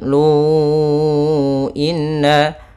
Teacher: adanya hamzah datang setelah huruf mad berupa waw di sini, ya, maka kita panjangkan di sini 4 harokat dan kita namakan dengan mad jaiz munfasil.